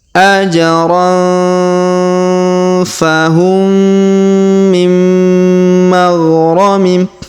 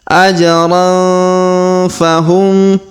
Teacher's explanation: Kemudian tanwin an pada huruf ron bertemu dengan huruf fa, maka kita dengungkan dan kita samarkan